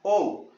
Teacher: अंतिम हमारा जो स्वर है ओ, ये भी वही काम कर रहा है, गले के साथ साथ होठ भी इसमें गोल हो रहे हैं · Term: कंठोष्ठे